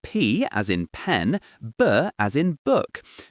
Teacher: you completely block the air flow in your mouth just for a moment and then you release it with a little burst of air like a mini well a mini explosion. · P, p, p, and b, b, b. You can feel your lips completely closing, building up that pressure, and then pop, the air comes out. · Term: stop consonant, plosives